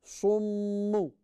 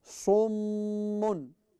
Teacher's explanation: we have to read it with Ghunna, which means we have to read it through nose. It's called a nasal sound.